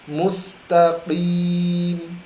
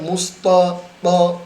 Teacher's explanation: jangan membaca musta, karena ta ini tipis. Ta senyum ta ya.